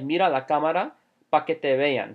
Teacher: So he didn't say para, he said pa.